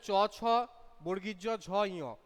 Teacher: উপরে টাচ করছে, উপরে তালুকে টাচ করছে। সেই জন্য এটার নাম হচ্ছে তালব্য বর্ণ।